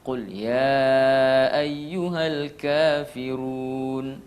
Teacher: 2 harakat kalau mat tabi'i. Kafirun itu adalah mat tabi'i, maka jangan lebih 2.